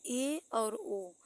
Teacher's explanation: समृद्ध स्वरों की अपेक्षा थोड़ा सा मुख खुला रहता है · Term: अर्ध समृद्ध स्वर